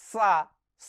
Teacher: जब हम कहते हैं तो हमारे दांतों के बीच से एक हवा जैसी निकलती है आप य अनुभव करेंगे तो य हवा गर्म हवा होती है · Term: ऊष्म व्यंजन